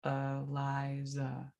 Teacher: they will often use a schwa at the beginning and the end of my name